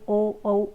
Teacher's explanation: जो कंठ ओष्ठ से बोले जाने वाली ध्वनियां हैं वो ओ औ